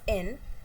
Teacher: And N, in the case of N, it's also a voiced sound, and also when we say N, our tongue is touching the teeth ridge and our mouth is completely closed and the air comes through nose. So here tooth ridge and nose are used. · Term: alveolar nasal sound